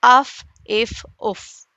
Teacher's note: اور فا ثنایا الیہ کا سرا اور نیچے کے ہونٹ کا اندرونی حصہ